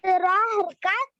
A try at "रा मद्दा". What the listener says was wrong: नहीं मद्दा है वो भी, अलीफ से पहले जबर है ना।